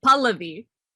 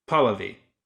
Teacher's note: So the emphasis is on the first syllable